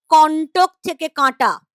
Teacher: ক এর সঙ্গে অটা অ টা চেঞ্জ হয়ে গেল আ সঙ্গে একটা চন্দ্রবিন্দু জুড়ে গেল সানুনাসিক দীর্ঘস্বর